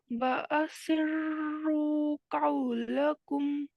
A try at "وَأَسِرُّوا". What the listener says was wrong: وَأَسِرُّوا، را کو اور مفخم کریے، موٹا کریے. وَأَسِرُّوا.